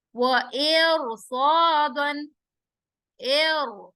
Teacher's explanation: را موٹا ہو جائے گا, تفخیم ہوگا. مرصادن, مر, را ساکن اور اس سے پہلے کسرہ اور اس کے بعد حروف مستعلیہ.